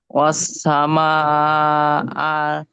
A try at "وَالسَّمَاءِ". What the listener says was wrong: ওয়াসামা কই হামজা জবর এই যে হামজা জের ই বলেন।